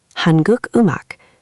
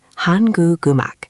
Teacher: It's like the consonant is jumping to the next syllable. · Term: liaison